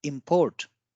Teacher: So when import word is used as a verb, then we give more stress on the I, that is import. And when it is used as noun, we call it import. So the more stress is on O